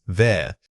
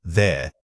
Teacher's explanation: When you say there, remember to engage your voice box. It shouldn't sound like a whisper. It's important that the voiced quality carries through the entire word.